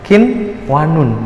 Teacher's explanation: qinwanun dibaca aja jelas tidak boleh didengungkan tidak boleh dimasukkan juga karena dia bukan itu Gom lagi ya tapi di adalah inhar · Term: inhar wajib